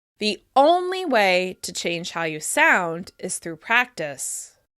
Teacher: you can hear that I'm stressing only the most in order to emphasize that practice is the singular most important way to improve